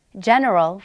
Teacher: when g is followed by either an e or an i it sounds kind of like h like in the english word hot but a little spittier and more guttural